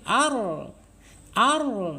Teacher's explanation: kalau ro ini condongnya ke dalam Ya ditarik ya ketika bergetar Ar ditarik ar ar ya Jadi untuk menghindari getaran lebih dari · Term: inhirf